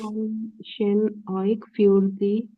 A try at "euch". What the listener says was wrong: ओइक नहीं है, ओइश है ना.